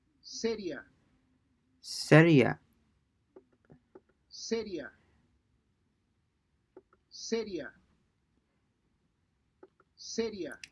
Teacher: IA is pronounced like the EO in the English word neon, except that it is a somewhat shorter sound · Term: diphthong IA